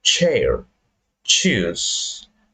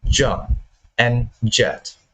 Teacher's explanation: sh is a voiceless affricate, while the sound j is a voiced affricate · both sounds are post-alveolar, which means we created them with the tongue behind the alveolar ridge. Yeah, the alveolar ridge is part of the palate just behind your upper teeth before the hard palate. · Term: affricates